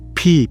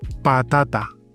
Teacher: In Spanish, no. P, T, no air.